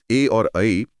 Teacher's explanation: ए और ऐ कंठ तालव्य हैं। यानी गला और तालु दोनों का एक साथ इस्तेमाल होता है।